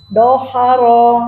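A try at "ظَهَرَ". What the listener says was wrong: Bukan do, itu mah wo. Pakai wo. Zaharo.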